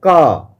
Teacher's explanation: जब आप का बोलिएगा तो आपको बिल्कुल स्पष्ट हो जाएगा कि हम जब का बोलते हैं तो ऐसा लगता है कि ये ध्वनि डायरेक्ट हमारे गर्दन से बाहर निकल रहा है, हमारे कंठ से बाहर निकल रहा है। मुंह का कोई पार्ट जो है आपके एक दूसरे से बिल्कुल टच नहीं करता है। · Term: कंठ व्यंजन ध्वनि